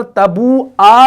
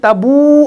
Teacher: آپ وقف کی صورت میں بھی یہاں پر تبو آ نہیں پڑھیں گے بلکہ تبو پڑھیں گے